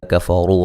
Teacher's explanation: کفروا را کو موٹا ادا کریں گے